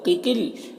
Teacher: دونوں قاف حروف مستعلیہ میں سے پر پڑھیں گے اور یہاں پر اللہ کے لام سے پہلے قاف کے نیچے زیر ہے تو اللہ کے لام کو باریک پڑھیں گے اور کھڑا زبر ہے، 1 الف کے برابر کھینچیں گے۔